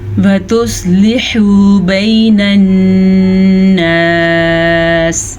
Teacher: صواد کو پر پڑھنا ہے، صواد حروف مستعلیہ میں سے ہے. لام زیر لی، حا پیش و حو، حا کے تلفظ کا دھیان بھی رکھنا ہے.